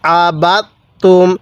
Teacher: আমি বাকে তায়ের সাথে লাগাইছি, দালের সাথে লাগাই নাই